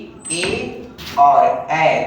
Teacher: इन दोनों को बोलने के लिए हमें कंठ और तालु दोनों की मदद लेनी पड़ती है। ये जो दो वर्ण आप लोग के समक्ष दिख रहे हैं, इनमें गले और तालु दोनों का इस्तेमाल होता है। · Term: कंठ तालव्य वर्ण